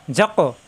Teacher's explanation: কফে সাকিন আসছে এই জন্য কলকলা হবে